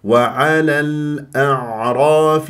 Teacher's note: لما تكون اللام قمريه يجب ان يجري فيها الصوت وفتره زمنيه بسيطه